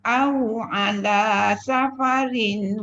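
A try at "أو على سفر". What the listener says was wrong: Dekat safarin tadi tu tak cukup dengung dia. Safarin. Aw ala safarin.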